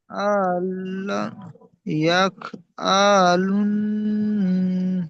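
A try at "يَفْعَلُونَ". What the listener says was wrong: ইয়াফ, ইয়া ফা সাবার ইয়াফ, আইন সাবার আ, এই আইনটি টান হবে না। ইয়াফ আ, লাম ওয়াও নুন পেশ লুন।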